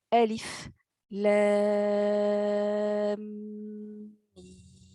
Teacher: vous allez devoir faire la liaison entre les deux, entre le lam et le mim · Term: idgham